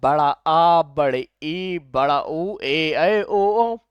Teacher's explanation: उच्चारण में लघु हस्व स्वर या लघु स्वर या एक मात्रिक स्वर की अपेक्षा दो गुना समय लगता है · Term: दीर्घ स्वर